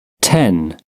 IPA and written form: tɛn (ten)